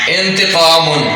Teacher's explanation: نون ساکن اور نون تنوین کو خفیہ کر کے پڑھا جائے گا، غنہ کے ساتھ خفیہ کر کے پڑھا جائے گا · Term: اخفاء